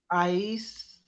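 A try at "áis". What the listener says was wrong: I, accent on the A.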